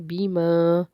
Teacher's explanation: الف سے پیچھے زبر ہے اس لیے ایک الف کا برابر اس کو ہم کھینچ کے پڑھیں گے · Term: مد اصلی